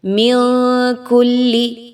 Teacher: من کلی، نون ساکن کے بعد کاف کا حرف آ گیا، اخفا کیجئے، نون کی آواز کو ناک میں چھپائیے